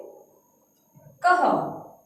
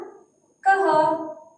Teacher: जब हम इसका उच्चारण कर रहे हैं तो पीछे से किसकी आधे ह की ध्वनि आ रही है ना?